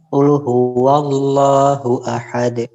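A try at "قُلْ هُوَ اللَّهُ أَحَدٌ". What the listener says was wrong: Ahad. Jangan ada jeda antara huruf dal dengan qalqalahnya. Karena di sana tidak ada tasydid. Jadi langsung qalqalahnya itu setelah dal. Ahad.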